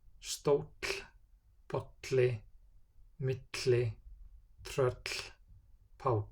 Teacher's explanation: For double L, the pronunciation is TL in all native words.